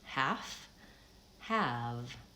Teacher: I'm lengthening the second vowel